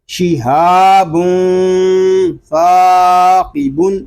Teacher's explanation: ہا کو ایک الف تک ہم کھینچ کر پڑھیں گے کیونکہ یہاں پہ الف مدہ ہو رہا ہے